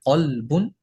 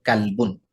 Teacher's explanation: তবে কফ হরফটা মোটা, কাফ হরফটা পাতলা। কফ যখন উচ্চারণ হয় তখন মোটা করে উচ্চারণ করতে হয় কলবুন, আর কাফ যখন হয় তখন কালবুন।